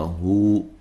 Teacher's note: واو ساکن ہو جائے گی اور یہ واو مدہ بن جائے گا، ایک الف کی مقدار کے برابر لمبا کریں گے